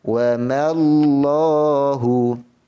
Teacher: Mim dah sebut jelas tapi Allah ini yang dinipiskan, tak boleh. Yang betulnya mim dijelas, sebutan mim disebut dengan cara jelas, lafaz Allah disebut dengan tebal.